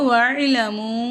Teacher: மீமுக்கு இந்த இடத்துல சின்ன மது வந்ததுனால அதை மூ அப்படின்னு 3 அலிஃபுக்கு நம்ம நீட்டணும்.